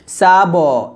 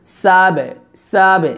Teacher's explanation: এই কলকলাটা পাতলা হবে আওয়াজ নিচের দিকে নামবে